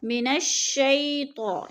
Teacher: من الشیطان، شی پہ یالین ہے، یا ساکن سے پہلے شین کے اوپر زبر ہے تو یالین. یالین کو لمبا بھی نہیں کرنا اور جھٹکا بھی نہیں دینا